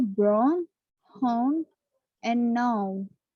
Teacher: How to pronounce It's starting with your jaw open saying A and moving backwards around to say U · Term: diphthong